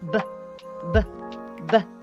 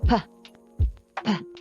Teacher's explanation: So for example, in a vowel as B, B, B, the air going out is less than the one that goes out with P